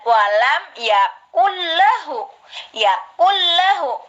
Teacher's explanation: Qul huwallahu ahad Allahu somad lam yalid wa lam yulad wa lam yakul lahu itu tulisannya sebenarnya yakun lahu. Nah, nunnya tidak dianggap, dilebur ke lam. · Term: idhom bilahuna